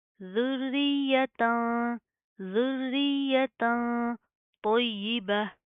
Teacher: اخفا ہوگا, ناک کے اندر ساؤنڈ پیدا کریں گے